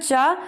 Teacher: चा तालव्य से तो निकलता है शब्द, परंतु ये महाप्राण ना हो के अल्प प्राण है